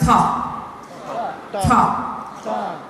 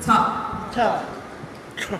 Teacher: the tip of your tongue is at the top of your first two teeth. Ta, and you put pressure on it.